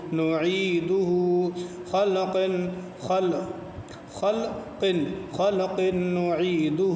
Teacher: خلق نعیدہ خا لام زبر خلقاف دو زرق خلق نون پیش نو عین یا زرعی نعی دال پیش دو نعیدو ہا الٹا پیش ہو نعیدہ خلق خلق نعیدہ، خا کو موٹا پڑھیں گے، قاف کو بھی موٹا یعنی پر کر کے پڑھیں گے